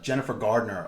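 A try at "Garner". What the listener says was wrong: Gardner. Not with a D. No D. Gardner.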